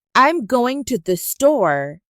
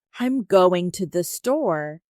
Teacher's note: We stress going and store. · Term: word stress